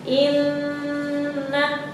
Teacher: Nah, di atas nun ada tasydid termasuk ke dalam al-khasyum ya, itu gunnah. Gunnah itu dimasukkan ya. Nah, ditahan dulu sebentar.